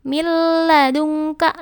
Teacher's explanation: Bacaan idgham bila guna terjadi apabila ada nun sukun atau tanwin bertemu dengan huruf lam atau ro. Cara membacanya adalah nun sukun atau tanwin masuk ke huruf lam atau ro, tetapi tidak mendengung. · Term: idgham bila gunah